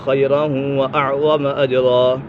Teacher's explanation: تنوین کے بعد واو حرف یرملون میں سے تو یہ ادغام یرملون ہو گیا، یعنی گنہ کر کے پڑھیں گے